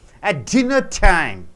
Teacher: dinner is a noun, time is a noun, dinner is stressed.